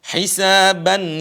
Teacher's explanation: ada suara Nun yang keluar dari hidung itu namanya quah hisab suara Nun suara n yang keluar dari hidung bukan dari mulut